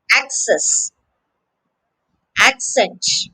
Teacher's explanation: In both of these words, the stress is on the first syllable.